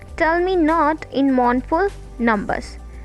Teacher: Tell is stressed and me is unstressed. · Not is stressed and in is unstressed. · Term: trochee meter